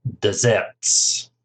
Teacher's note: Stresses on the second syllable, desserts.